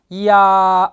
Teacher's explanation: 야는 이하고 아가 합해진 거예요. 이하고 아가 합해진 이중모음이죠.